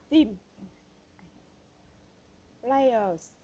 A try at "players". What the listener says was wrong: Okay, players, but with the last word is z. Players, players.